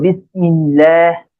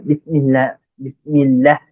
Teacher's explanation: আল্লাহ শব্দের ডানে যদি জের থাকে তখন আল্লাহ শব্দের লামকে পাতলা করে পড়তে হয়